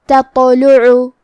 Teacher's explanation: کلمت تطلع میں یہاں حرف تا ہے اور اس کے بعد حرف الطا ہے، تا اور طا کی ادائیگی ایک ہی جگہ سے ہے، لیکن تا حروف الترقیق میں سے ہے تو ہمیں تا کو پتلی آواز میں پڑھنا ہے، اور طا حروف التفخیم میں سے ہے تو ہم طا کو موٹی آواز میں پڑھیں گے، اور کیونکہ اس پہ جزم ہے تو ہمیں طا کو ہلاتے ہوئے یہ کلمہ کو پڑھنا ہے تطلع۔